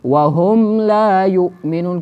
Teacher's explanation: میم چې دی د خپل مخرج نه مونږه بغیر د غنې نه وویلې